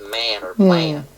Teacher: when we have an ah sound before an m or n consonant, there's a raising of the sound because it actually starts higher in the mouth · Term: raising of the ah sound, raising of the A sound